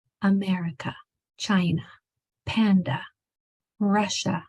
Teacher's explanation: A at the end makes the schwa sound, which is the same sound as the short U. Remember that really lazy sound, lazy jaw, lazy tongue. A at the end always makes the schwa sound.